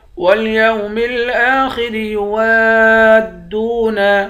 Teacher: وَالْيَوْمِ الْآخِرِ يُوَادُّونَ، واو کو دال کے ساتھ ملا کر پڑھیں گے، الف کے اوپر مد ہے، اس مد کو 5 الف کے برابر کھینچتے ہیں، دال کو واو کے ساتھ ملا کر واو کو ایک الف کے برابر کھینچیں گے۔